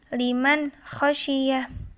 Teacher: ada nun sukun bertemu dengan huruf kha, maka harus dibaca jelas tanpa mendengung.